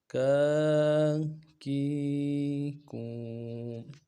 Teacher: الٹا پیش میں ہونٹوں کو خوب گول کریں گے اور الٹا پیش کو ایک الف مقدار میں کھینچیں گے۔